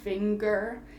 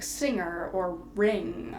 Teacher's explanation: One would be like finger, where we have that hard g, finger. And then the other one would be like singer or ring, where we kind of swallow that G sound.